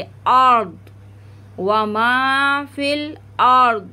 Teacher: द्वात को हम मोटा कर देंगे, और रा को पुर पढ़ेंगे मोटा करके